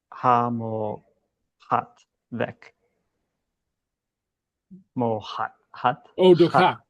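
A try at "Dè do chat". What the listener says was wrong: Chat, not hot.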